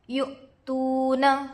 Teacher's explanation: حمزہ پر جزم ہے، حمزہ ساکنہ کے پڑھنے میں جھٹکا ہوتا ہے